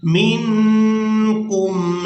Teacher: میم کو نون ساکن کے ساتھ ملائیں گے تو اخفا کے ساتھ ادا کریں گے، یعنی نون ساکن کی آواز کو ناک میں چھپائیں گے